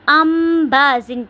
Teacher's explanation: ان بازن نہیں پڑھنا، اس کو ہم نے ام بازن پڑھنا ہے، ام بازن غنہ کے ساتھ آواز کو تھوڑی دیر ناک میں لے کے جائیں گے